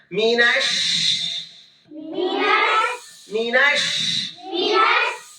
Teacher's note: তাফাসসি মানে মুখের ভিতরে শাসা শব্দ ছড়ায় পড়বে। কি হয়? শাসা শব্দ ছড়ায় পড়ে।